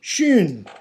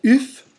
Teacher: Well, schön is just a little bit more rounded. That is, your mouth, your lips are more rounded when you say schön than when you say uf